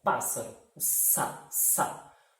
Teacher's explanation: A gente escuta um único som, a gente não pronuncia os 2 S's. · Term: dígrafos